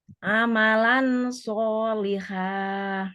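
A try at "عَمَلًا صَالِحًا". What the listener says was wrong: Bukan amalan, tidak jelas. Amalan, nunnya Nggak di nggak diperjelas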